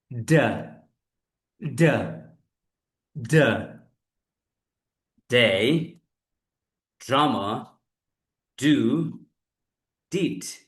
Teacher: ডটা বলতে হবে জিহ্বার সামনের অংশ উপরের দাঁতের গোড়ায় যাবে। লুক এট দিস, এই যে এটা উপরের দাঁতের গোড়ায়।